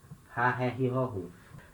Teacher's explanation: de rato, rápido, né? Esse R feito na garganta. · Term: R aspirado